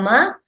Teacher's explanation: So lips plus the nose for makara.